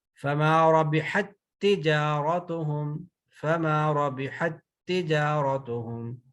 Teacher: اچھا، تا کا تا میں فما ربحت تجارتهم، فما ربحت تجارتهم، اب یہ جو تا فما ربحت تجارت، نو، تو یہ تا دوسری تا میں مرج ہو گئی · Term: ادغام